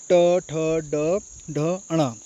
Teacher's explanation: मूर् मूर्धा मतलब जीभ के पीछे का एक हिस्सा होता है। जब हम इनको पढ़ने जाते हैं तो हमारी जीभ जो है वो थोड़ी सी मुड़ जाती है। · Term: मूर्धन्य